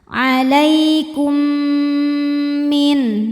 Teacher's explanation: Kemudian ada hukum idgham mimi karena mim sukun menghadapi huruf mim, maka mim pertama dileburkan ke mim kedua disertai dengung